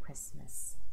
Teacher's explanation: The word Christmas, the T is silent. I know there's a T in the middle.